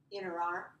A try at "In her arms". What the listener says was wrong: We don't need that H. So what happens with in her? It sounds like this. Sounds like this word, inner.